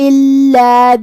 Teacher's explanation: 2 حرف کے برابر ہمیں لام کو پڑھنا ہے، کیونکہ تشدید کی اصلیت 2 حرف ہوتی ہے